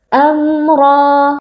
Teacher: mim sukun yang bertemu dengan huruf ra hukumnya adalah izhar syafawi cara membacanya adalah dengan membaca bunyi mim sukun dengan jelas tanpa ghunah yang dipanjangkan · Ra dibaca dengan tebal karena di sini ra berharakat fathah. Cara menebalkannya dengan mengangkat pangkal lidah. Kemudian ra di sini juga terdapat mad tabi'i karena ada alif yang sebelumnya berharakat fathah, jadi kita baca panjang 2 harakat.